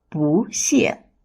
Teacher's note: 不 originally has a falling tone. But when it's followed by another falling tone, it changes into a rising tone. 不谢. That makes it easier to pronounce.